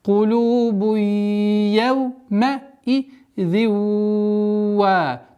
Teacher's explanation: Здесь у нас правило идгам, частичной ассимиляции, частичной назализации, ассимиляция с частичной назализацией в размере двух огласовок